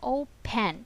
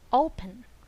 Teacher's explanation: It's not pronounced the way it is spelled and is instead pronounced with a quick neutral vowel sound called schwa